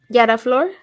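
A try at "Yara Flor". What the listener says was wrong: You gotta roll the R.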